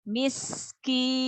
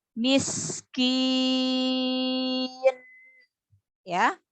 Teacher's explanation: huruf sin mempunyai sifat hamas, ya. Jadi dialirkan juga nafasnya. Jadi jangan diputus.